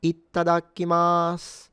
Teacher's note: might even sound like they put a little tsu or a doubling in the first ta